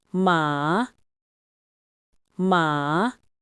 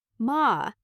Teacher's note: And finally, the rising tone. Start low, then let your voice rise up like you're asking a surprised question.